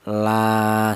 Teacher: Jadi la dibaca mad tha thobi'i itu alasannya ada alif yang didahului huruf yang berharakat fathah. Adapun panjangnya mad thobi'i yaitu satu alif. Satu alif itu sama dengan dua harakat atau dua ketukan.